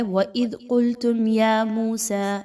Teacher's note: میم ساکن پر بالکل بھی نہیں رکنا، آپ نے یہاں پر جلدی سے میم کی ادائیگی کرتے ہوئے آگے یا موسیٰ اس کا لفظ پڑھنا ہے۔ میم واو پیش مو، واو مدہ ہے، 1 سے 2 الف کے برابر اس کو پڑھیے۔ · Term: اظہار شفوی